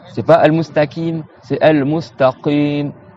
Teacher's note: Le qaf, c'est tout au fond de la bouche. Au fond de la bouche, au fond de la langue, tu as le ka, dites ak, kakiku, c'est bon, coco.